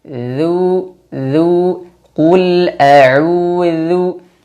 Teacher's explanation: Dzal makhrajnya diperhatikan, ujung lidah bertemu dengan ujung gigi seri yang atas.